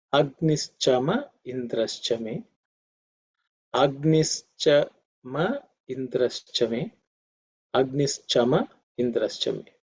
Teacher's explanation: The ma after Agnischa is actually me, but because of Sandhi, because E follows it, the me becomes ma.